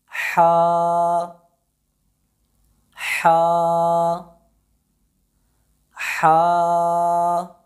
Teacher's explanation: جب ہم حرف حا کی ادائیگی کریں گے تو اس کی ادائیگی حلق کے درمیان والے حصے سے ہوگی، یعنی حلق کے درمیان والا حصہ تھوڑا سا سخت کر کے اپنی آواز کو دبا کر نکالیں گے